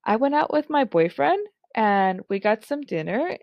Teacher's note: the pitch is going up and up and up to where the person doesn't actually sound certain about the story that they're telling